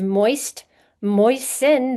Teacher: there's no t sound in moisten